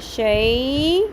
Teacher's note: حروف لین نرمی سے، اس کو شے نہیں پڑھنا جیسے ہم مجہول طریقے سے ایشین سٹائل میں پڑھتے ہیں، اس کو عربی طریقے سے پڑھنا ہے ہم نے عربک سٹائل میں۔